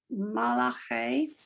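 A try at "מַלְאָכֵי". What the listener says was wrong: actually okay, so there's really no li, so it's mal. It's mal, it's a blend.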